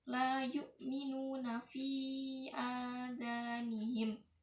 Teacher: terdapat mat jaiz munfasil karena mat bertemu dengan hamzah di lain kalimat yang panjangnya 2,5 alif sama dengan 5 harokat.